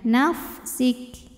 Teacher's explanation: Huruf kaf jangan ketinggalan hams di belakangnya ya. Hamsnya ketika sukun atau disukunkan belakangan keluarnya.